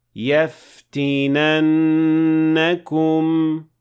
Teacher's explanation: So the noon here has shadda, which means that the first noon is a noon sakina, and the second noon has fatha on it. So when you pronounce the entire word, you have to remember to apply ghunna of 2 counts.